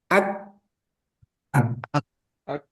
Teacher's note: Kalau syiddah berkaitan dengan suara, ak nggak ada angin, nggak ada udara.